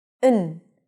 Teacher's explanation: So we generally don't say and, we just say n. So we turn the a into a schwa, and the d we just eliminate. We don't really need it.